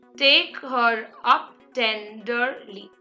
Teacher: trisyllabic meter where you have three syllables together the first is dactylic meter where you have a stressed syllable followed by two unstressed syllables